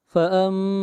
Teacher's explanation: نون ساکن کے بعد حرف اقلاب با ہے، اس لیے یہاں پر اقلاب ہوگا، نون کو نہیں پڑھیں گے بلکہ نون کے بجائے میم کو پڑھا جائے